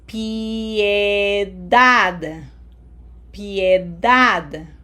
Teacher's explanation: We have to pronounce each vowel, so this does not sound like pie, okay? Have to smile here.